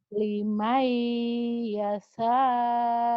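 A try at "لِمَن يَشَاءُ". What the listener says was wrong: Shin. Hutang shinnya ibu nih. Shin. Liman yasha. Shin. Shin.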